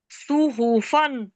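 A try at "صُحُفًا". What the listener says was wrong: सुहूफन, सुहूफा, खींच कर बोले।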